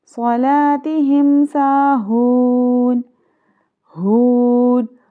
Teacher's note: ہا کو سینے سے نکال کے ادا کرنا ہے